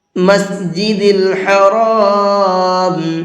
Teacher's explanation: مسجد الحرام، اس را کو بھی منہ بھر کے پڑھیں گے، اس لیے کہ را کے اوپر زبر ہے، اور را کے اوپر زبر ہوتا ہے تو را کو منہ بھر کے پڑھتے ہیں